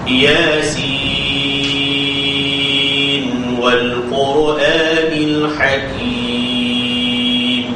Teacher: jangan kita baca antara sin dengan wa itu kita berhenti atau putuskan suara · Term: baca wasal